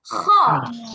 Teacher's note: ইয়া নুন খ। নুন হ্যাঁ, খ উচ্চারণের বৈশিষ্ট্য হচ্ছে গলার মধ্যে আওয়াজ হবে, গলা পরিষ্কার করার সময় যেমন গলায় একটা ভাব হয় ওরকম ভাব হবে।